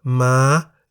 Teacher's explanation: For example, Ma, meaning horse, is in the high tone because the word Ma has one syllable that begins with a low-class consonant Ma and has the tone mark Mai To.